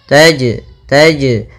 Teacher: Jim sukun atau Jim mati maka ia kita namakan dengan bacaan Qalqalah yang mana suara jimnya harus memantul